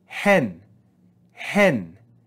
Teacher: we're going to read this with a rise in pitch marked by the acute accent · a different word the difference is in the aspiration so here we're going to add rough breathing before the sound of the epsilon